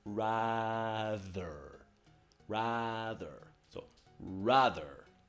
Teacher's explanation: Now the next point is you got ra, and then you got th, which is just the tip of the tongue.